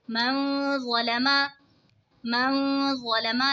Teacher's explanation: نون ساکن کے بعد حروف اخفا کا ظا ہے تو اخفا ہوگا یعنی غنہ کر کے پڑھیں گے